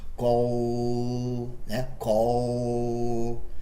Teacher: Se eu prolongar o L, você consegue sentir essa vibração. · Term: The Dark L